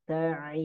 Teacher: Ain keluarnya dari tengah tenggorokan ya.